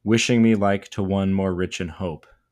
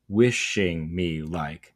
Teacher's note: Where, again, we are supposed to be in iams, according to the traditional structure of unstressed and stressed, but they begin with two trochaic substitutions. We're using a trochee this time, which is stressed then unstressed.